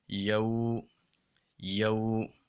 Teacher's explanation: ہم یہاں پہ یا کو 1 الف کے برابر لمبا کریں گے واو لین کی وجہ سے